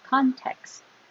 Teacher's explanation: Hold the T, don't release it like context, just hold it.